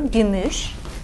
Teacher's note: Notice that the word gümüş, silver, ends in one of these voiceless consonants, sh.